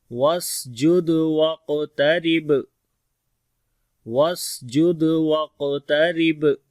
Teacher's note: سین کے اندر صفت ہمس آئے گی اور صفیر بھی ہوگی، دال کے اوپر قلقلہ کریں گے